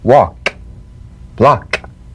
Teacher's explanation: Cognate, g, the unvoiced tongue-back plosive consonant. With the tongue in the G position, let the tongue spring away in the soft, unvoiced click of the K drum beat. Feel a crisp tap and a pulsation in the back of the tongue.